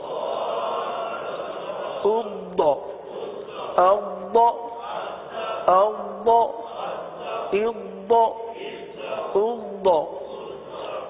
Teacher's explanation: ضاد میں جماؤ تو تھوڑا سا محسوس ہوتا ہے، جماؤ کی سی صورت ہے، صفت استطالت ادا ہوتی ہے، لیکن آواز ٹوٹتی نہیں ہے، کلکلا نہیں ہوتا